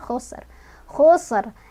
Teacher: Sofir itu ada desisan, hamas itu ada udara keluar.